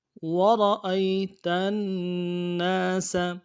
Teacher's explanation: نون کے اوپر تشدید ہے، زور دینا ہے، الف مدہ کھینچنا ہے۔